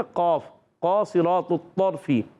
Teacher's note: اس کا مخرج زبان کی جڑ و تعلق کا نرم حصہ